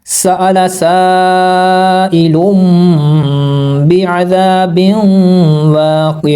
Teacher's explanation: और इसको जब पढ़ते हैं तो इसकी अदायगी में हम गुन्ना भी करते हैं और इख्फा भी करते हैं, यानी गुन्ना करते हैं नाक में आवाज़ रोकने को, और उसकी आवाज़ को, मीम की आवाज़ को हम छुपाते भी हैं नाक के अंदर